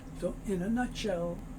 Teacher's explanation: The N moves over, so it's in a.